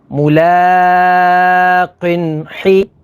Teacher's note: اب یہاں پر ناظرین تنوین کے بعد حا ہے، حا حروف حلقی میں سے ہے، تو یہاں پر اظہار ہوگا یعنی غنہ نہیں کریں گے۔ سین الف زبر سا، حسا، با زیر بی، حسابی، یا ہا زبر یہ، حسابیہ، ملاقن حسابیہ۔